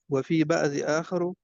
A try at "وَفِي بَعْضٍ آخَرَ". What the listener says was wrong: بعضی کا تنوین کہاں گئی ہاں آخرہ وفی بعض آخرہ یہ آخرہ جی جی یہ آخرہ ہے غیر منصرف